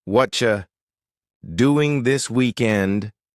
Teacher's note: They connect words together. Could I get becomes more like coulda get. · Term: connected speech